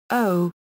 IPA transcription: o